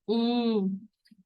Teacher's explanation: منہ کھول کے زبان کو بالکل بیچ میں رکھ کے کہ وہ منہ کے کسی پارٹ سے ٹچ نہ ہو, صرف ناک سے آواز نکلے گی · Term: اخفاء کی ساؤنڈ